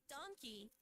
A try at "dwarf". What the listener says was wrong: You keep saying donkey as in the equine animal. Dwarf rhymes with scarf. Now say darf.